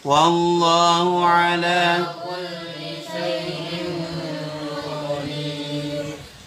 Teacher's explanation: Nah, roknya ini yang wakaf dibaca tarqiq. Kenapa? Karena jatuh secara ya sukun atau jatuh setelah harokat kasrah ya.